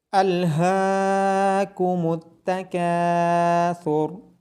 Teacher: ہا کی آواز گلے کے نیچے والے حصے سے آئے گی اور ثا کی آواز نرمی کے ساتھ آئے گی۔ ہا کو کھڑی زبر ہونے کی وجہ سے اور کاف کے بعد الف مدہ ہونے کی وجہ سے لمبا کیا جائے گا۔